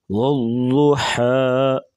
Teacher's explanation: ضاد کو پور پڑھیں گے اور حا گلے سے آواز نکالیں گے۔ والضحیٰ، حا کی باریک آواز ہے اور ضاد کو پور پڑھیں گے۔